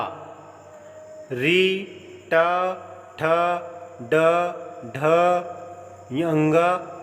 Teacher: मूर्धा री, ट, ठ, ड, ढ, अंग तथा ण का उच्चारण स्थान मूर्धा है। इन वर्णों के उच्चारण में जीभ ऊपर के दांतों के साथ वाले खुरदुरे भाग मूर्धा को स्पर्श करती है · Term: मूर्धन्य